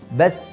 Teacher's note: Terjadi kesalahan ketika menyebutkan huruf sa, kurang mengalir saat sukun.